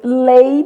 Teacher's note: Decrescente, vogal mais semivogal